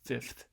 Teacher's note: non-sibilant fricatives at the beginning and end